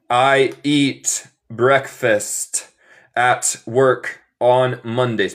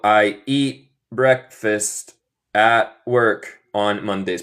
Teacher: Yo como los tés finales porque soy estadounidense.